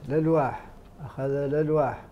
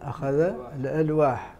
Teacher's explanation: هنا نقلت حركة الهمز للساكن وهو لام التعريف